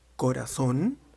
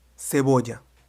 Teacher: Tout comme en français, le C peut faire deux types de sons. Le son K comme en corazón ou le son S comme en cebolla.